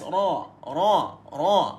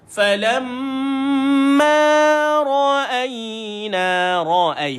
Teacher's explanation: Bukan muncung sangat, dia bukan nipis sangat. Tengah-tengah dan ada sifat takrir.